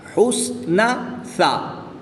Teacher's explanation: تو ان کو پڑھتے وقت ان کی ادائیگی کا خاص خیال رکھنا ہے کہ سین کو جب پڑھنا ہے تو سیٹی کی آواز ظاہر کرنی ہے